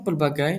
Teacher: terdapat diftong pada suku kata ketiga iaitu gai, AI yang berada pada suku kata yang sama